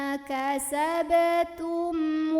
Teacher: ada mim sukun yang bertemu dengan huruf wow maka cara membacanya mim sukun ini dibunyikan dengan jelas bunyi am dan tidak ditahan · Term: izhar syafawi, idhar syafawi